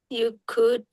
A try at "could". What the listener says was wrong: Oke, could dibacanya could, nggak usah ada LL-nya, nggak usah cold atau apa itu nggak usah. Biasa aja could.